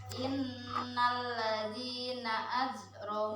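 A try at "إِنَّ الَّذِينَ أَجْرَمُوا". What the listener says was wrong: Jangan az. Ya, jim. Qalqal. Aji. Seperti zaid. Aji. Biasa tutup dengan zaid. Nah, masih kaku. Aji. Biasa. Aji bukan az. Kasih plong saja. Kalau pelahnya itu langsung lepaskan saja.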